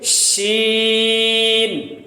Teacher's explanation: ज़ुबान का बीच, ज़ुबान का शजर, सेंटर जब ऊपर के तालू से लगे तो जीम, शीन · शीन ऐसा हर्फ है जिसको शोर करके तफशी से पढ़ा जाएगा, फैलाओ उसके साथ पढ़ा जाएगा।